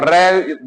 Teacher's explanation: र पे क्या हो रही है हमारी चीज दो तीन बार टच कर जा रही है